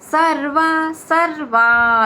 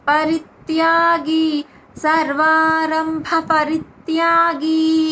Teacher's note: సర్వా దీర్ఘాక్షరం పలకాలి బా సర్వారంభ రంభ భ మహాప్రాణాక్షరం స్ట్రెచ్ పలకాలి